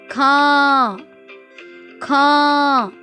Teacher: जब आप इन्हें बोल रहे हैं तो आपने ध्यान दिया होगा कि हमारे मुख से अधिक ध्वनि निकलती है और नाक से कम। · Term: अनुनासिक